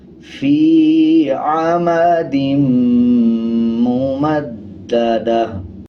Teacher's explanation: گول تا پہ جب وقف کرتے ہیں ہا بن جاتا ہے، دونوں زیر کو سائلنٹ کر دیں گے اور وقف کرتے ہوئے آدھے ہا کی آواز آئے گی